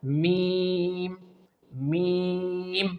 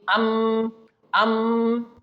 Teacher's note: This letter meem is also pronounced when both half of our lips make a connection.